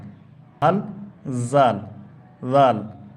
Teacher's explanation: উপরের দাঁত এবং জিহব্বার শেষ অংশ মিলে উচ্চারণ হয়